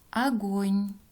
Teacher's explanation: «О» в начале слова безударное гласное, поэтому произносим как «а».